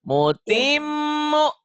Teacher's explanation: Mutim, M-nya ditahan, U-nya dilepas.